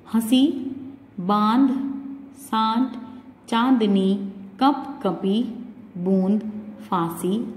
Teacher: अनुनासिक ऐसी ध्वनि है जिसका उच्चारण करते समय वायु नाक और मुख दोनों से निकलती है